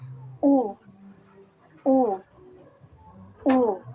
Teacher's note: ang posisyon ng ating dila ay nasa mataas at ang bahagi naman ng ating dila ay nasa likod kaya ito ay binibig na U u u halimbawa ulan upuan